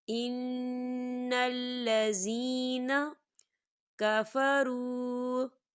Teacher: یا ساکن سے پہلے زیر ہے تو یہاں پر یا مدہ ہو رہا ہے، تو ہم اسے دو حرکت کی برابر کھینچ کے پڑھیں گے